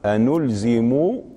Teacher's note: يضمون ميم الدالة على الجماعة إذا وليها، إذا جاء بعدها ضمير متصل، ويصلونها بواو لأنها صارت مضمومة، هذا بدون خلاف.